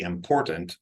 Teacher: A lot of people are now saying that important, they're taking that T out.